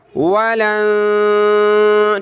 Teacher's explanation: نون پہ اخفا ہو رہا ہے، ناک میں آواز پیدا ہو رہی ہے